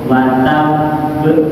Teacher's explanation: jangan langsung kol-kolah, jadi ditahan dulu karena ada tasdid, baru keluarkan kol-kolahnya. Wa tabb, jangan ini wa tabb, salah bacanya karena tasdidnya hilang. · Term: kol-kolah kubro